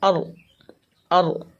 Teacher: رائے ساکنہ را ساکنہ سے پہلے زبر ہے، اس لیے اس را کو ہم پر پڑھیں گے